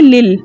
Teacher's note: لام کو لام کے ساتھ ملا کر پڑھیں گے، یعنی زیر والی لام کو اس لام مشدد میں چھپے لام ساکن سے ملا کر پڑھیں گے.